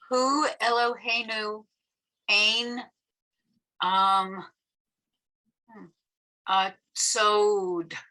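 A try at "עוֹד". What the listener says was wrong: So this is an ayin, not a tzadi. So as an ayin, it's silent. ode, perfect, exactly, ode. Sometimes it's hard to know the ayin from the tzadi.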